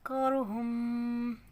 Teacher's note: یہاں پہ میم مشدد کا غنہ ہو رہا ہے، ناک میں آواز لے کے جائیں گے